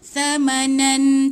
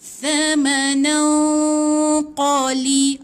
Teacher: Qaf ni pula dia tebal Qaf ni dia isti'la ataupun bahasa Melayu kita dia tebal. Jadi dia dekat nak tekak dalam sikit. Jadi bunyi dia macam tebal. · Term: ikhfa hakiki